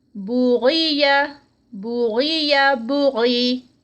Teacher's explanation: غین یہاں پر درمیان میں موٹا ادا کیا جائے گا